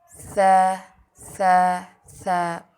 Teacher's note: زبان کی نوک اوپر کے 2 دانتوں کی ایجز کنارے کے نیچے لگائیں